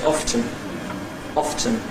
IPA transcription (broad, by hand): ˈɒftən